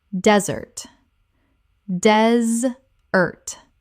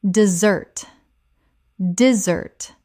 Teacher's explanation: The noun desert has stress on the first syllable. The dessert we eat and the verb to desert both have stress on the second.